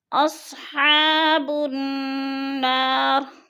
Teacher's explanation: بن پہ نون مشدد ہے، سختی سے جمع کر پڑھیں گے۔ الف مدہ کو بھی ہم نے 1 الف 2 حرکات کے برابر لمبا کر کے پڑھنا ہے۔